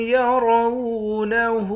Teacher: الٹا پیش کو ایک الف کے مقدار کھینچ کر پڑھتے ہیں